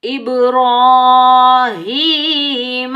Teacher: با ساکن پر کلکلا ہوگا، جب ہم کلکلا کریں گے ڈبل ساؤنڈ آئے گا، ٹکراؤ پیدا ہوگا، بغیر کھنچے پڑھیں گے۔